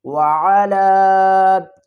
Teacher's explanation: واو زبر وا، عین زبر ع، وعا۔ لام مد کھڑا زبر لا، چھوٹی مد ہے، اس کو 3 الف کی مقدار کھینچ کر پڑھیں گے